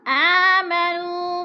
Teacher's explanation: آمنو پہ وہ مدہ ہے، وہ ساکن سے پہلے نون کے اوپر پیش ہے، وہ مدہ کو بھی کھینچ کر پڑھنا ہے 2 حرکات کے برابر